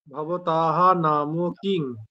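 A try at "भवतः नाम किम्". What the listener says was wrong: কিম। ম কিম। না, উনস্বর লেখা হয় কিন্তু উচ্চারণটা হয় ম। যখন আমরা সংস্কৃতে কথা বলি তখন অনুচ্চার উচ্চারণ হয় না, উচ্চারণটা হয় ম। নাম কিম। হ্যাঁ, ভবতাহা নাম কিম।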